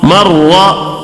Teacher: رائے مشددہ پر زبر آیا ہے، اس کے لیے را کو موٹا پڑھیں گے.